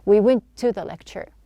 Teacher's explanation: instead of pronouncing 2 T's, we just have 1.